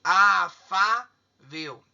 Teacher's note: A sílaba tônica está no 2, está na penúltima sílaba. Então, acentua, e terminou em L. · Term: paroxítona